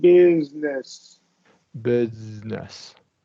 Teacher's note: with business I want you to hold that z a little bit